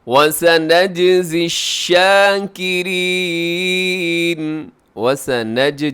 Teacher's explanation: جیم یہاں پہ حروف قلقلہ میں سے ہے تو قلقلہ کر دیجیے گا